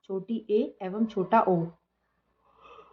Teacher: अर्ध संवृत होते हैं जिनको बोलने के लिए जो हमारा मुंह है वो आधे से भी कम खुलता हो